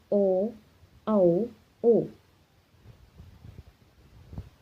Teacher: ओष्ठ जमा कंठ, यानी कि जो होंठों से निकले और गले से निकले